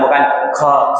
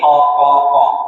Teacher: Jangan dikasihkan napas namun dimasukkan ke pangkal lidah bagian dalam. Hilang napasnya jahr.